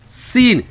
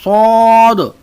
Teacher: سین کی آواز باریک ہے اور صاد کی آواز موٹی ہے